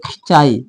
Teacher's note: जैसे कि खिंचाई हम लोग पढ़ते थे खिंचाई मतलब कि नाक का मतलब खिंचाई हल्का सा नाक में से आवाज आएगा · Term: अनुनासिक स्वर